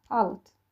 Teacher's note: D nə cür tələffüz ediləcək? T kimi. Yəni çarlaşacaq tələffüzdə.